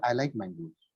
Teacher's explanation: when I said mangoes, I went slightly down, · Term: falling intonation